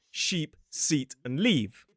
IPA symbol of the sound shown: iː